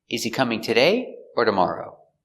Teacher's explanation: it's an information question because you have options today or tomorrow in these questions where you have two options the intonation goes up before or and then down at the end